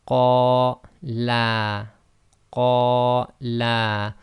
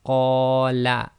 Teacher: So if you notice, the la was longer than the first la.